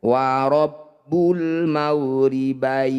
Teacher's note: masyriqaini wabul maribaini Ya Sukun didahuli fathah juga disebut bacaan madlin ketika mad lin dihentikan maka harus dipanjangkan